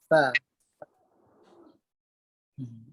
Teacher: Yang paling tepat ialah gigi atas pada bibir bawah. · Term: huruf fa